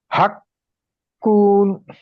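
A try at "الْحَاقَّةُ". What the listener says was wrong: আল হবে, আল আল আল হাক্কাতু।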